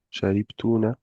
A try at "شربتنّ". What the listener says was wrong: Il y a une shadda là. Sharibtunna.